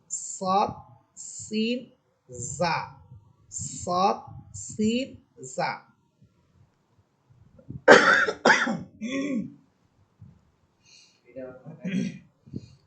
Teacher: চরি পাখির মত আওয়াজ হবে তিনটি হরফে